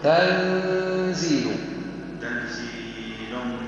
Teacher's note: اخفي عاد النون بطها حركتين وغنه من الخيشوم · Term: النون مخفات